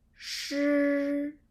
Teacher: the first tone is what we call flat higher tone